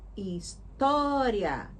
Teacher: O to, que é a segunda sílaba, é mais forte